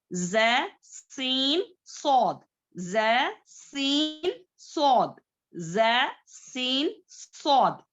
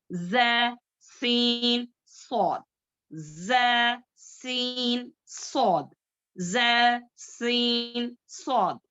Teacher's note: देखो इसमें सीटी की आवाज आती है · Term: सफीर लेटर्स